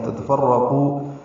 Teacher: یہاں پہ را پر ہے، قو قاف بھی پر ہے اور یہ واو مدہ ہے